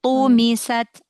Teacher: Tu-nya tebal kan, mi-nya tipis kan. Tumisat. Mi-nya jangan tebal.